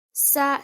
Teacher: the sin is a light letter, it is 1 count.